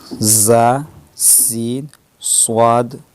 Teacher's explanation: ان 3 حروف زا، سین، صاد کو ادا کرتے وقت سیٹی کی طرح آواز نکلتی ہے، اس لیے ان حروف کو حروف صفیریہ یعنی سیٹی والے حروف کہتے ہیں۔